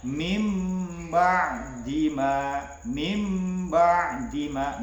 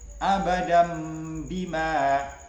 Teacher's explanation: menyuarakan huruf ya nun atau tanwin menjadi suara mim, ya. Yaitu dengan merapatkan dua bibir serta mendengung. Contohnya mim ba'dima, mim ba'dima, nun bertemu dengan ba. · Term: iqlab